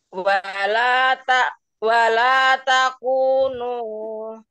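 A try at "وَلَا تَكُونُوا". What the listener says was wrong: Hati-hati. Kepanjangan nu sedikit saja. Nu wala takunu.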